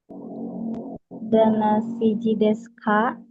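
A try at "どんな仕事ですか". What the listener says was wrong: Ini juga su, jangan dimunculin U-nya ya. Saya ingatin kembali, U-nya jangan dimunculin sama dengan di sini, mas. Jangan masuk ya. Untuk su yang di akhir sama di tengah begini atau di akhir termasuk akhir juga ya. Deska ya, pakai S aja ya.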